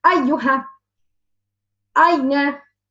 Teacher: Another letter from the middle, letter ya. The middle of the tongue touches the roof. I will try to raise the middle to touch the roof.